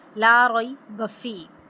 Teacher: बा के ऊपर जो है ना वो कलकला करेंगे क्योंकि वो हरूफ कलकला में से है